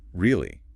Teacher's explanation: If I say really with a rising pitch, I'm asking is that true? If I say really with a falling pitch, I'm saying I agree with you or maybe I am disappointed. The words are the same.